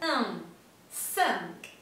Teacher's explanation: una I y una N que se pronuncia E nasal